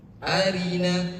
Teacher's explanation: Rnya tipis arina. Tapi tetap ada sifat takrirnya. pengulangan arina.